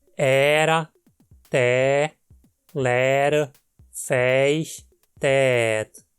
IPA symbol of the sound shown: ɛː